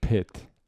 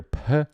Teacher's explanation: there's a short H-like sound after the P. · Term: short puff of air